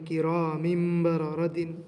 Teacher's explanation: لہٰذا نون ساکن کو میم سے بدل کر پڑھیں گے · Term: میم کی آواز